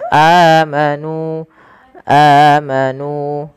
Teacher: ada hamzah bertemu dengan huruf mad, maka ia kita namakan dengan mad badal. Panjangnya adalah dua harakat.